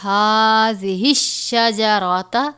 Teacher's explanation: ہا کے اوپر کھڑا زبر ہے، ایک الف کے برابر پڑھیں گے